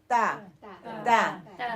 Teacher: زبان کی نوک کو سامنے والے 2 دانتوں کی جڑ سے لگا کر باریک آواز لگا تا تا.